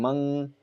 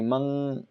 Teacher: In the nose when read, the top of the tongue will not touch the roof of the mouth, like the n word in monkey. So when you're saying mang, when you say mang, this tongue is hanging. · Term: Ikhfa